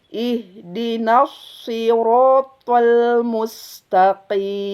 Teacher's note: sod tebal, ro tebal, to tebal